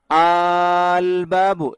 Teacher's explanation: তো আল বাবু, এখানে দুই হামজা একত্রিত হওয়ার কারণে একটা একটার মধ্যে ইদগাম হয়ে এরকম উচ্চারণ হবে, মানে ইদগাম হয়ে আলিফে মামদুদা হবে। দুই আলিফ এক হয়ে এক আলিফ আর এক আলিফে টান হবে, আল বাবু, এরকম হবে উচ্চারণটা।